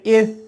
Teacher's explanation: اتنی مہارت سے پڑھ لیں کہ ان کے ثا ادائیگی میں اگر سیٹی نہ بجے